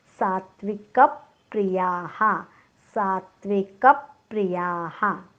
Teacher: सात्विक, साच्या पुढे जोडाक्षर आहे, पण सावर आपण आघात देणार नाही, कारण सा दीर्घ आहे. आघात आपण फक्त ऱ्हस्व अक्षराच्या पुढे जोडाक्षर आलं तरच आपण आघात देतो, म्हणून सा आपल्याला दीर्घ दाखवायचं आहे.